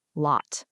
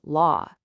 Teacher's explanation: compare the short O with that longer ah sound